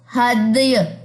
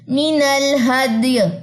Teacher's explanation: وقف کیسے ہوگا؟ ہدی, ہلکا سا یا کی زیر ڈراپ ہو جائے گی, جزم آ جائے گی